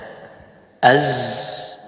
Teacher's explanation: Az itu tidak mengeluarkan udara, tidak bernafas. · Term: sifat al-jahr